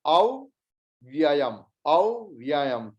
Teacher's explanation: क्योंकि व्य कॉन्जंक्ट कॉन्सोनेंट है, उसके पहले अ है, तो व दो उच्चारित होगा, एक शॉर्ट, दोनों ही शॉर्ट